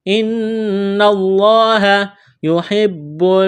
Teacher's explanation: ان اللہ یحب المتوکلین، لفظ اللہ کے نام سے پہلے زبر ہے، لفظ اللہ کے نام کو موٹا کرنا ہے، نون مشدد ہے، نون کے اوپر 3 دندانے والی چیز تشدید ہے تو یہاں پر غنہ کریں گے، آواز ناک میں چھپائیں گے